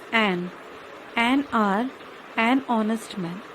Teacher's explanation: the word begins with a consonant H, but H is silent and we hear the sound of O. O is a vowel.